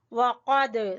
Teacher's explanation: वक़द, क़ाफ को जबान की जड़ से